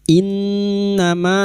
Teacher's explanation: nun yang bertasdid gunna musyaddada kita dengungkan selama 3 harakat